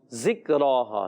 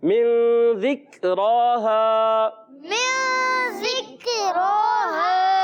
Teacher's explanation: جی ہاں، اور غنہ کرنا ہے. اور ذال کی ادائیگی کلیئر رکھنی ہے، ذال کو زا سے نہیں بدلنا